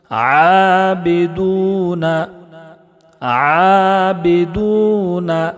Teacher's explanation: عین میں کھڑا زبر ہے، اس کو ایک الف کے برابر کھینچ کر پڑھیں گے